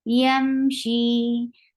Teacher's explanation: This is sound is tawassut. She, two counts long because ya sakina followed by kasra. So this is two counts long vowel.